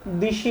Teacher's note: যেমন এই পূজা থেকে পুজো, এখানে দীর্ঘ উকার প্রভাবে পরের যে স্বরধ্বনি আকার সেটা পরিবর্তন হয়ে ও স্বরধ্বনি হয়েছে। অন্তঃস্বরের প্রভাবে স্বরধ্বনি দেশি থেকে দিশি হয়েছে